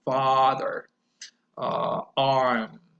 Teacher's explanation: it's an open back vowel sound and in order to produce this sound your jaw needs to be completely dropped and the mouth is open wider than for any other sound